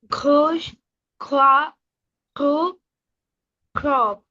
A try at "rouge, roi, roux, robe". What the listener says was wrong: Okay, so I hear that you're trying to make it from the back of your throat, but let's not have so much K sound in it. Rouge, roi, roux, whoa. Okay, less K sound and more like a gargle sound.